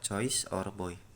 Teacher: The sound shift from O to I.